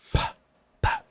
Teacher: So, voiceless stop it would be like a pa, pa. So my throat's not doing anything, but my lips are making a stop.